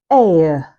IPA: eɪə